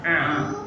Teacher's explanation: Kalau ini dia A biasa, dia dari sini A. Kalau ini A, agak dekat di tenggorokan kita. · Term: ain